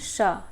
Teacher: जब हम श बोलते हैं तो हमारी जो जीवा है थोड़ा सा तालु में टच होती है, तो इसलिए ये तालव्य ध्वनि है।